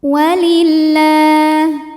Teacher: Lam pada lafaz Allah dibunyikan secara tark sebab huruf sebelumnya berbaris kasrah. Maka kita bunyikan lamnya tipis.